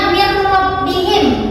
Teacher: nunnya dibaca idgham, tidak jelas, tidak kelihatan gitu. Setelahnya huruf ra itu tidak ada gunanya atau tidak ada dengungnya.